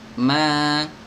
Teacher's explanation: Mim di Al-Quran itu semuanya tipis, ya, tidak boleh dibaca tebal. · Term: huruf mim